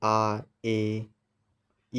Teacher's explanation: ਇਹਨਾਂ ਦੇ ਉਚਾਰਨ ਲਈ ਦੋ ਮਾਤਰਾ ਦਾ ਸਮਾਂ ਲੱਗਦਾ ਹੈ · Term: ਦੀਰਘ ਸਵਰ